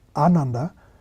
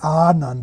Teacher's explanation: it's pronounced with the emphasis if not twice the length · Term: long vowels